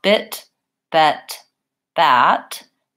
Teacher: So for example, if I were to say bit, bet, bat, you can see how bit, bet, bat, it's a matter of the tongue being lower and my jaw being slightly more open.